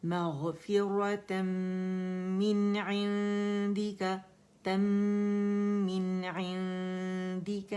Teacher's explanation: مغفرة من یا اظہار ہوگا کیونکہ عین ہے، حروف حلقی میں سے آ رہا ہے تو نون کا اظہار کریں گے